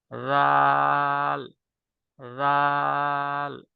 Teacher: হয়ে যায় জাল হয়ে যায় জালের মাখরাজ বা উচ্চারণ স্থান হচ্ছে জিহিবার আগা সামনের উপরের দুই দাঁতের আগার সঙ্গে লাগাইয়া নরম করে কোন শীষ বের হবে না